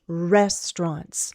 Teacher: Restaurants has 2 syllables. The first syllable is stressed.